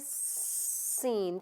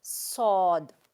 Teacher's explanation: سین میں بھی سیٹی کی آواز ہے, صاد میں بھی ہے, لیکن سین باریک آواز ہے